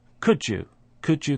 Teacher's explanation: so we have a j sound which we didn't have when we started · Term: assimilation